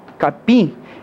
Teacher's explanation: repare que esse M aqui no final não tem som de outra semivogal, de outra vogal. · mesmo estando na última sílaba, esse IM tem som de uma vogal só. Então, mesmo estando na última sílaba, isso aqui seria um dígrafo vocálico, tá certo.